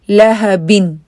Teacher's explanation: کسرہ جو ہے اس کی آواز ای ہی ہو، اے نہ ہو